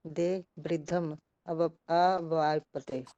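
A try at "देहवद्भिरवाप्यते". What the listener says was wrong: ये तो आ ही गया, बस ये जो है ना, देह वद भी है, देह वद भी, पहले द को पढ़ना है, उसके बाद भ को पढ़ना है।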